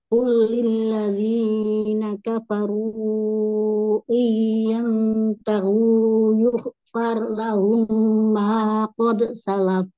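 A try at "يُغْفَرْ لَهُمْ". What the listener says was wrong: Di kata yug harus alir tebal, kemudian far ro sukun ya, gak boleh terhenti suaranya, harus mengalir. Ya, ghain tebal. Ghain itu istilah. Roknya juga tebal, ya.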